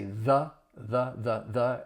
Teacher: most of the time people are going to say the the the and you're going to use that schwa sound